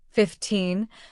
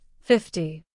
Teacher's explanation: When English speakers say 15, the stress falls on the second part 15, while in 50, the stress falls on the first part 50.